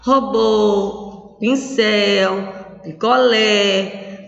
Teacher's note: nessas palavras, robô, pincel, picolé, a sílaba tônica é a última. E quando a sílaba tônica é a última, essas palavras são oxítona.